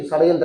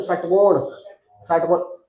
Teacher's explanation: इसको बोलते हुए जीभ को मोड़ देना, इसलिए इसको मूर्धन्य स्वर कहते हैं। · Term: मूर्धन्य वर्ण